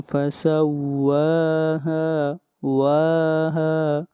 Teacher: واو کو بھی کھینچ کر پڑھیں گے ایک الف کے برابر اور ہا کو بھی ، یہاں پر دونوں کے اوپر مد اصلی ہے، فَكَذَّبُوهُ فَعَقَرُوهَا